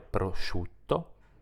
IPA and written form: proʃutto (prosciutto)